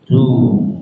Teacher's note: Misalkan ru itu tebal, tapi kalau tipis ru. Yuhsiru itu tipis karena pangkal lidahnya tidak naik ke atas. Jadi harus ditebalkan, pangkal lidahnya dinaikkan supaya membentuk sifat tebal.